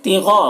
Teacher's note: غین کو پر پڑھیں گے کیونکہ غین حروف مستعلیہ میں سے ہے